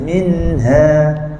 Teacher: Ha ni bunyi dia memang macam besar tapi dia bukan tebal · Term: nipis